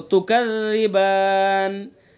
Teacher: نون کے نیچے زیر ہے، اب ہم نے وقف کیا تو یہ سکون سے بدل دیا اس کو، تکذبان۔ تو الف حرف مدہ اور اس کے بعد سکون وقف کی وجہ سے۔ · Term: مد عارض وقفی